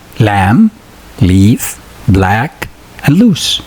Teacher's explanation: These words have a light la.